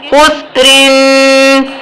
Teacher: خا موٹا ہے، پر ہے، سبز رنگ کا ہے تو پر پڑھیں گے، خاسین پیش خس، رو دو زیرن، خسرن۔ را کے نیچے زیر ہے اس لیے را کو باریک پڑھیں گے